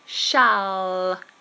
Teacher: This dark L is a problem for many people. When L appears at the end of a word, the tongue, tip, must touch the roof of the mouth.